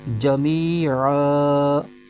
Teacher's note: اگر وقف کریں گے تو دو زبر کی جو تنوین ہے یہ الف میں بدل جائے گی